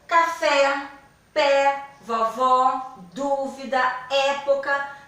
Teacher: são palavras onde nós abrimos mais a boca falamos com mais intensidade e o sonzinho ficou aberto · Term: acento agudo